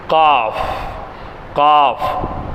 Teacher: காஃப் தொண்டையினுடைய அடிப்பாகத்திலிருந்து வரணும். நாவினுடைய கடைசி பாகத்தில் தொண்டையின் ஆரம்பத்தில் உள்ள மேல்முரசில் சேர்த்து அழுத்தி உச்சரிக்க வேண்டும்.